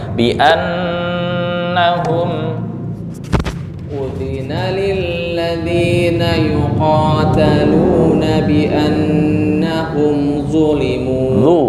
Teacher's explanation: bi'an dengung temponya 2 ketukan